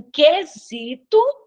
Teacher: aqui em quesito eu não escuto o u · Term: dígrafo consonantal